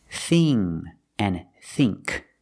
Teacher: thing and think use the long e sound not the short I